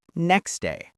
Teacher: Next day might sound like next day, with the T sound disappearing. I don't know often becomes I dunno, with several sounds weakening or dropping. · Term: dropped sounds